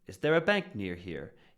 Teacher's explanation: You're going to hear the first stressed word is bank. So everything before that is going to be rising up, leading up to the bank. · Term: rhythm